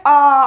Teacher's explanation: अगर आप आ बोल रहे हैं पूरा मुंह खुलेगा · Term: विवृत